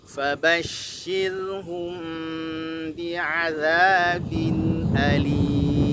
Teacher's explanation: Shinnya diberikan nabrah, kemudian roknya tipis